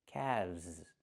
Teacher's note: The L is silent and we pronounce the V sound with vibration plus the z sound like zebra together